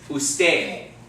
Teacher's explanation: remember that D sounds more like a TH